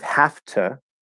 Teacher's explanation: we're actually seeing the voicelessness of the t change the v into an f